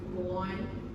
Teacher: there is a W sound in the middle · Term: linking